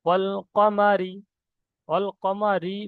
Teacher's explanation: মুখটা সিম্পল অবস্থায় যেমন থাকে সেরকম অবস্থায় পড়তে হচ্ছে আওয়াজটা একটু পাতলা মতন হচ্ছে মোটা মতন হচ্ছে না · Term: বারিক